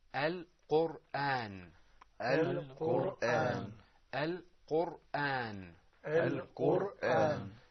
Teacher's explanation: So that ra, the ra or the r sound in Al-Qur'an is full-mouthed. The reason is a bit technical, and that is that there's a sukoon on the ra, which you can see, and there's a dhamma before it.